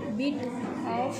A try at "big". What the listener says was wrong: திரும்பவும் அதே தப்பு பண்ணுறீங்க. பிட்டு வரக்கூடாது. அங்கே என்ன இருக்குது? இக்கு சவுண்டில் முடியுது. அப்போ என்ன வரணும்? BIG.